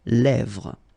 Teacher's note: this E accent grave here, it gives you the really open sound